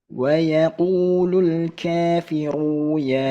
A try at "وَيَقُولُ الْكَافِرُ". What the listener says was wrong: Ru-nya pendek. Wa yaqulul kaf.